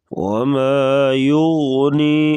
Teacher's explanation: غین کو پر پڑھیں گے